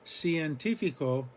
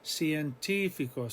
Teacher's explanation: we're not stressing the diphthong are we the ie at all we're stressing the i the third vowel back